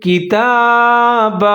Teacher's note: تا کے اوپر کھڑا زبر ہے، ایک الف کے برابر لمبا کر کے پڑھیں گے